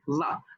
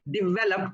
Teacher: The teeth go in front of the lower lip and you say va. So you say develop but not develop, because then it almost sounds like dollop.